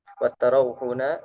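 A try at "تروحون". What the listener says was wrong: Taru, taru ya, taru bukan tarau, taru.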